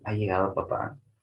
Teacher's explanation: Tiene un tono ascendente, ¿no?